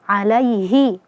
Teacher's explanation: Idza tutla alaihi ya. Ya sukun sebelumnya fathah di situ ada mad lin dibaca lembut.